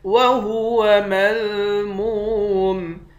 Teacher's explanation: میم کو واو کے ساتھ ملا کر واو کو ایک الف کے مقدار کھینچیں گے ، واو حروف مدہ ہے، آخر میں میم ساکن ہے۔ ام